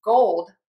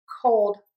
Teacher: Gold: voice box is on and moving. Cold: voice box is not on and not vibrating.